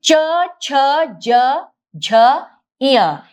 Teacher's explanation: ये हमारे तालू से निकलता है, मतलब कंठ से थोड़ा ऊपर। तो वहां जब हम च यहाँ ऊपर जब जीभ टच करती है तो वह स्थान तालू है और इसलिए ये तालव्य कहे जाते हैं।